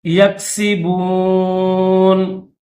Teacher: نون کے اوپر زبر ہے لیکن جب یہاں پر وقف کریں گے تو نون کو ساکن پڑھیں گے